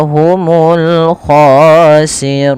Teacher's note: khannya agak tebal karena dia huruf isti'la